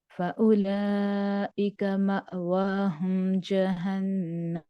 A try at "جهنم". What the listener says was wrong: जहन्नम नहीं, जीम को लंबा नहीं होने देना, जहन्नम।